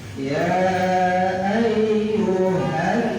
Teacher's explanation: Yang kedua nun bertasdid hukumnya gunnah ya, dengung, ditahan 2 harokat. Ya ayyuhan didengung dulu.